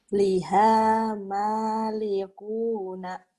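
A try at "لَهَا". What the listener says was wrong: Liha bukan liha tapi laha.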